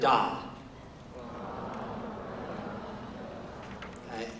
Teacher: da is a medial consonant it's halfway between a front and a back